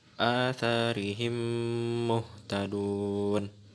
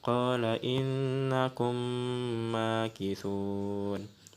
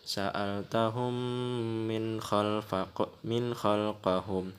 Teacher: Jadi mim matinya itu ditekankan atau dibaca berdengung sebanyak dua harakat atau satu alif. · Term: idgham mislain